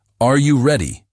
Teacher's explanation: Voice goes up at the end.